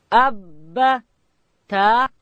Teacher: با ادا کیږي د دواړو شونډانو د یو ځای کېدو څخه د لندې حصې څخه